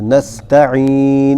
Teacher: نستعين تا موٹی نہیں پڑھی جائے گی تا باریک ہوگی عین صحیح نکلے گا